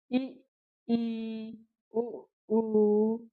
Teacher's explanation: समृत स्वर का अर्थ है कम खुला हुआ, बिल्कुल बहुत ज्यादा कम खुलता है। जिन स्वरों के उच्चारण में मुख कम खुले, उन्हें समृत स्वर कहते हैं।